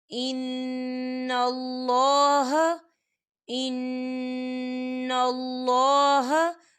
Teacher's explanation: یہاں پہ نون مشدد ہے تو یہاں پر غنہ ہوگا اور اللہ کا نام جو ہے پر پڑھا جائے گا، موٹا پڑھا جائے گا، کیونکہ اللہ کے نام سے پہلے زبر ہے.